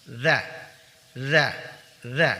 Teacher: ujung lidah ditempelkan pada 2 gigi seri bagian atas tanpa desis. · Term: huruf dzal